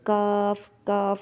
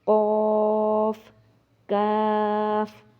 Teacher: اکثر لوگ ان دونوں کو باریک کاف پڑھ دیتے ہیں، کاف کاف ایسے کر کے، جبکہ اس کو موٹا پڑھنا ہے